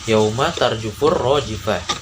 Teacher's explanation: karena huruf alif lam bertemu huruf samsiyah ro, dibaca idgham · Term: alif lam samsiyah